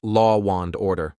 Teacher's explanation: in the phrase law and order, we often insert an extra W sound between law and, so it sounds like law wand order. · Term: Intrusion